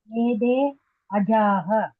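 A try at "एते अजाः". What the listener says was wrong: Ete. Try not to say ede. Ete ajaha.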